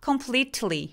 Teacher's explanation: completely 할 때 T 소리 낼 때 숨을 참는 게 포인트예요.